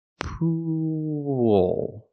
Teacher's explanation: Poo. Then I'm linking to the dark L, where I tense my tongue.